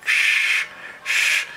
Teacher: el alfabeto fonético internacional lo define como fricativa retrofleja sibilante sorda